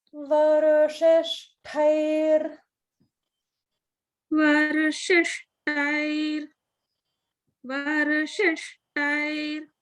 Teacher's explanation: So here there's a combination of ra plus sha. And so we have swara bhakti. · there is a ta mahaprana in the word, shishtair